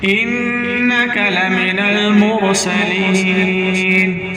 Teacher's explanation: सीन को सीटी की आवाज़ से निकालना है और रा को पुर करके पढ़ना है.